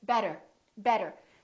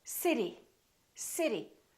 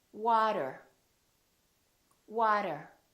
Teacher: the T sounds more like a D sound, or what we call a very fast D. So, for example, when we say the word better, we have a vowel, T, and another vowel.